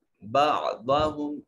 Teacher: بعضهم ضاد موٹا اور پر کر کے پڑھیں